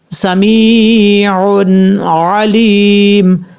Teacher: جب سٹاپ کریں گے تو میم ساکن ہو جائے گا